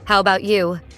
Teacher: Here we're reducing about to bout, cutting out a sound and linking the words together. So instead of each word standing out, it flows right through. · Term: reduction